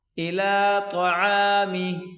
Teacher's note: عین کو گلے سے نکالیں زور لگا کر